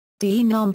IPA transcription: dɐ.ˈnom